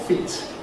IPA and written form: fiːt (feet)